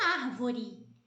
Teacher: a sílaba tônica que aparece ali é o ar